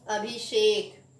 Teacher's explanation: number 7वां श का श में परिवर्तन, यानी दंत श का मूर्धन्य श में परिवर्तन